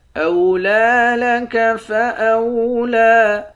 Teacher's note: لام پر کھڑا زبر ہے، ایک الف کی مقدار کھینچیں گے